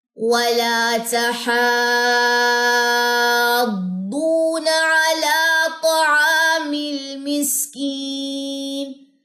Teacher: بڑی مد ہے, تشدید آ رہی ہے اس کے بعد, تو یہ 6 سیکنڈ یہ مد کی مقدار جو ہے وہ جائے گی.